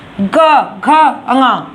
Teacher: ग घ ङ इसमें एक कंपन उत्पन्न होता है, इसलिए इन वर्णों को सघोष व्यंजन के अंतर्गत रखा गया है। याद करने के लिए मैंने आपको बता दिया, प्रथम और द्वितीय वर्ण आपका अघोष व्यंजन के अंतर्गत आएगा, तीसरा, चौथा और 5वां वर्ण आपका सघोष व्यंजन के अंतर्गत आएगा।